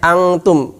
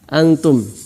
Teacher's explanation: Ini bukan bacanya angtum, bukan banyak yang baca dengan ng, sehingga dia malah persiapan kaf. Harusnya persiapan ta, antum, bukan angtum. Kalau angtum dia persiapan qaf dan kaf.